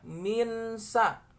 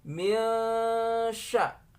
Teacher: Cara menyamarkannya, nun sukun ini dekatkan kepada shin, ya. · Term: samarkan